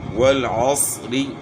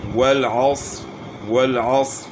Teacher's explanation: را کے نیچے زیر باریک، وقف کریں گے تو را کو موٹا پڑھنا